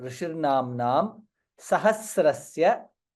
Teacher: ma is there na is there namnam both the letters we have to pronounce very clearly dirgha and followed by anuswara